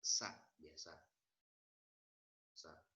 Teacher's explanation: Sa dibaca S dengan A. Bunyi huruf keluar dari ujung lidah dan mendapati ujung gigi seri yang di bawah